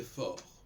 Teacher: si je n'avais pas de E après forte, on dirait fort. On ne prononcerait pas le T. Donc là, la consonne ne serait même pas entendue.